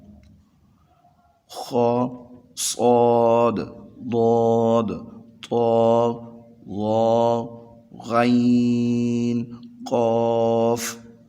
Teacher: ان کی آواز کو موٹا کر کے پڑھا جاتا ہے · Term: حروف مستعلیہ